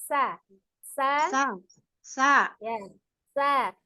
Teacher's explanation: huruf sin dengan shad itu kan dia sama ya, sama ujung lidahnya berada di antara ujung gigi seri atas dan bawah ya.